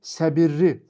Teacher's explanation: Səbirli sözü səbirli formasında tələffüz olunur. Yəni L samiti R ilə əvəz edilir. Və beləcə bu sözün tərkibində də L səsi yoxdur.